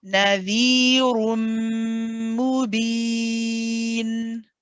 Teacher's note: I just want to hear the dhamma more clearly on the ra when you say ru. Don't give that just a little bit, make it more distinct, the u, then move on to the meme.